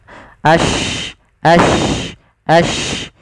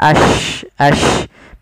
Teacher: Maka dia sya itu dengan dari tengah lidah kita seperti ada tambahan, ada y-nya gitu ya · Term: shin